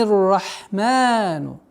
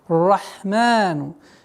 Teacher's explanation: Долгота в размере двух огласовок, фатха удлиняем.